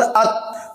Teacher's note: तो ता में जुबान लग रही है ऊपर दांतों की जड़ में, मसूड़ों में